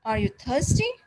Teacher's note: low-pitch going up rising